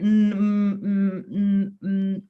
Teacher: it's quite hard to make a big sound on that mmm-hmm because your mouth is closed and it's a nasal sound so it's coming out to your nasal cavity which sort of